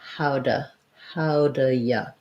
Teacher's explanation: i'm going to change it and reduce that do to more of a da · So thinking about, for one thing, how I would usually say this, how do you usually, is that rather than how do with, if I'm just saying I do, I'm going to use that oo vowel. In this phrase, though, I'm going to change it and reduce that do to more of a duh. How do ya? So I could say how do you, if I'm really wanting to stress the you, then I'm going to use a clear you as well.